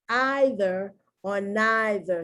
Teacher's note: The Brits say either or neither, spelled exactly the same, but they put the emphasis on the long I. We put the emphasis on the long E.